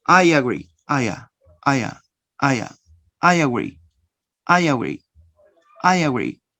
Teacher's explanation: I, vowel sound, agree starts with another vowel sound. In order to pronounce these two sounds together, you insert, notice, you insert the consonant ya.